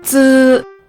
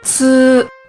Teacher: Zi is unaspirated. Ci is aspirated.